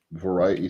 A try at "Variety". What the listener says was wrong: why does he pronounce variety without the T? He says variety.